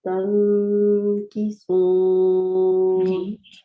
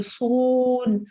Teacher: صاد ہم موٹا پڑھیں گے, گول منہ کے ساتھ راؤنڈ منہ بنا کے